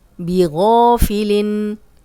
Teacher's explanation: غا الف مدہ ہے اور غائن موٹا بھی ہے